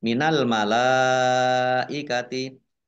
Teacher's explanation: mim tasdid dibaca mendengung ditahan dua harakat · karena bertemu dengan huruf alif dalam satu kata maka menjadi mad wajib muttasil dibaca panjang